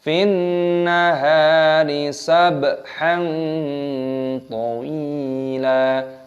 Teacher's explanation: haknya dibaca panjang, ada tanda alifnya mad tabi'i, dipanjangkan 2 ketukan.